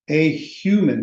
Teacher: A human, because human aspirates the H.